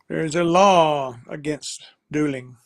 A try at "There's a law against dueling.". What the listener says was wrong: There's a law against dueling, yes.